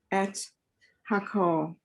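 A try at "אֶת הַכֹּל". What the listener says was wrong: Nice job.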